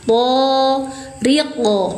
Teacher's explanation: Pantulkan suara qof tanpa terjedah tanpa dipanjangkan. Qalqalah kubro.